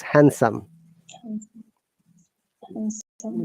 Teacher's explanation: There is no D sound. It is handsome.